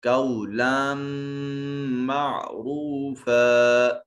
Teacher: لام منون ہے اور اس کے بعد حروف یرملون میں سے میم ہے، ادغام بالغنہ ہوگا · را مضموم ہے اس لیے مفخم ادا ہوگا